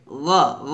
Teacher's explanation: গলার শেষ হইতে গইন এবং খটা উচ্চারণ করতে হয়। আর এটা নিয়ম হচ্ছে গইন আর খ যখন উচ্চারণ করবেন অবশ্যই হরফটা কি করতে হবে, মোটা করতে হবে, কারণ গইন খ হচ্ছে মোটা হরফ, এই জন্য হরফগুলো মোটা হবে।